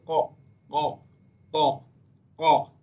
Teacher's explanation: जबान की जड़ को तालु के नर्म हिस्से से लगाने से अदा होता है। जो हमारी जबान की जो जड़ है, जहाँ पर हमारी जबान खत्म होती है वो जड़ है, उस वो जबान की जड़ जब तालु के हमारे नरम हिस्से से लगती है। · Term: कॉफ